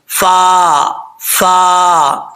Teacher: اوپر والے دانت ان کا جو نچلا کنارہ ہے نیچے والے ہونٹ کی تری والی جگہ پہ لگے گا تو فا پڑھا جائے گا